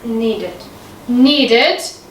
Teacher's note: Again, I hear the ending id, and this is correct.